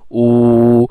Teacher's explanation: the vowel food is actually the high back vowel, because the tongue is at highest position in food